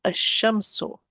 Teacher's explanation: I'm going to delete one of the vowels and I'm not pronouncing the lam.